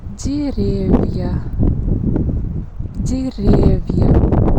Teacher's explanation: This vowel, я, is a complex vowel and it consists of two sounds, y and a. When it goes after soft sign, we pronounce both sounds ya.